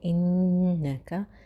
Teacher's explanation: انکا کو ہم نون مشدد ہے تو ہم غنہ سے پڑھیں گے